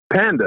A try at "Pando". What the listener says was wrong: No, Pando with the O on the end.